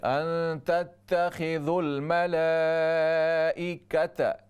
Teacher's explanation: کاف کے زبر کو لمبا نہ کیجیے